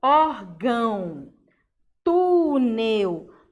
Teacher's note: obrigatoriamente o penúltimo som é o som mais forte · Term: paroxítonas